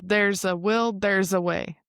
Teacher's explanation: We have the voiced S. So it sounds more like a Z. There's Z. There's a not like there's S.